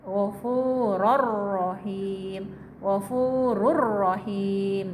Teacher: Ghafuron rahima, karena idgham bilauna maka tanwinnya melebur ke huruf ro menjadi ghafuror. Tidak dibaca ghafuron tapi ghafuror, ada tasdid, seolah-olah ada tasdid tapi tidak ada tasdid.